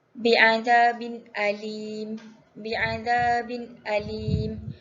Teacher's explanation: hukum tajwid izhar halki. Cara bacaannya dibaca jelas tanpa dengung.